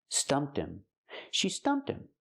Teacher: The H is silent, so you hear stumped him.